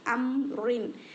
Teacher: ام را 2 زیر رن، ام رن، یہاں پر رکنے کے لیے را کو 2 زیر ہے تو 2 زیر کو ساکن میں بدل دیں گے، سکون دے کر یہاں پر رکیں گے، اور را کو موٹا پڑھیں گے، اس لیے کہ اس سے پہلے زبر آنے کی وجہ سے